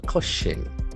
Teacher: that S will have the CH sound